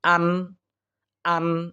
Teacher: সাকিন ও তানবিনের বামে ইজহারের এই ছয়টি হরফের যেকোনো হরফ আসে নুন সাকিন বা তানবিনকে গুন্নাহ ছাড়া আমরা স্পষ্ট করিয়া পড়ার চেষ্টা করব